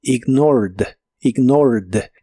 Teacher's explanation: Es un verbo regular, así que en el pasado termina con ed, aunque solo se pronuncia la D